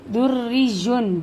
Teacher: را زبر اور پیش سے تفخیم پڑھا جائے گا، موٹا پڑھا جائے گا، اور را زیر سے ترقیق یعنی باریک پڑھا جائے گا